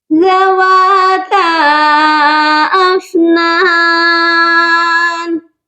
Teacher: ذواتا افنان، زال کو نرمی سے پڑھا جائے گا۔ ہم اپنی زبان کو سامنے والے دانتوں کے کنارے سے ٹچ کریں گے اور بہت ہی سافٹلی ٹچ کیا جائے گا۔ افنان، اس فا پر بہت سے لوگ قلقلہ کرتے ہیں، افنان، فا پر قلقلہ نہیں کیا جاتا، یہ پڑھا جائے گا افنان۔